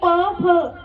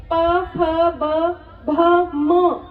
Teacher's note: आपके जो लिप्स हैं वो आपस में टकरा रहे हैं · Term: ओष्ठ